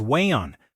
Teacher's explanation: The vocalist on the Cascio tracks used what linguists call a glottal stop, a pattern of dropping the T sound in the middle of words. The word waiting, for example, was sung as way-on.